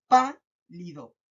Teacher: ¿Se dan cuenta que yo marco más la voz en pa y en lido no tanto? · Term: sílaba tónica